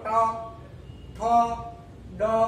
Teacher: છેક ઉપર તાળવાને જીભ વળી જાય એને કહેવાય મૂર્ધા